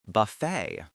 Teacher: It rhymes perfectly with the word say or way. You need to make sure you stress the second syllable.